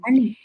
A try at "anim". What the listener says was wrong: Ani termina la pronunciación con una I. Entonces tienes que añadirle M. Porque es como suena, anim.